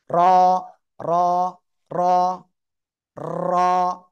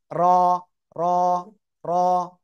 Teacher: just একবার থেকে দুইবার জিহ্বার আগা উপরে নিচে বাড়ি খাবে একবার দুইবার তিনবারের বেশি যেন না হয়